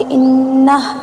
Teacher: अगर हमको वक़्फ़ करना है तो हम कैसे वक़्फ़ करेंगे, इन्नह ऐसे करेंगे, वाव नहीं पढ़ा जाएगा